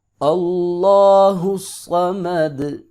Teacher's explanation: اللہ کو لفظ اللہ کو موٹا کر کے پڑھیں گے، صاد کو بھی موٹا کر کے پڑھیں گے کیونکہ حروف مستعلیہ میں سے ہے، سیٹی بھی آئے گی